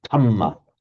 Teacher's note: The Thais will pronounce it as an aspirated t